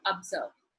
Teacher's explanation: let us look at the word observe up so two syllable it is in the second syllable that is stressed